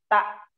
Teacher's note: Ujung lidahnya ditaruh di gusi